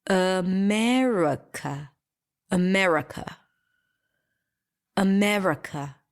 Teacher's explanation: there is no ah in America and there is definitely no e in America · the truth is that we don't pronounce any of those vowels because all of them are reduced to AA America America America yes so there is no ah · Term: schwa